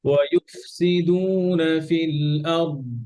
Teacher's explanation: ফিল দত ছুটবে না, দত কলকলা হরফ না, কিন্তু পাঁচটা হরফ ছুটবে, লাভ দিবে, বাউন্স করবে, হ্যাঁ।